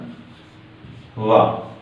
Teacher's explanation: वा का उच्चारण दांत प्लस होठ से होता है